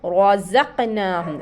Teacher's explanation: रा के ऊपर खड़ा ज़बर है, इसको मोटा पढ़ेंगे ज़क़, ज़ा को हम अच्छा ज़ाहिर करके पढ़ेंगे।